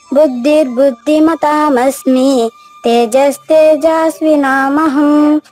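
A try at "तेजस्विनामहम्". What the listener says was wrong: అంతా బాగా చెప్పు. ఒక్క చోట దీర్ఘం ఇచ్చేసారు. తేజస్వినామహం. అలా చెప్పు.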